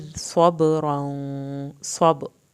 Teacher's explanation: सौत को पुर करना है, बा का कलकला करना है